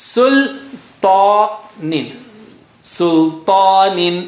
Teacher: طا. طا is very thick and high sounding.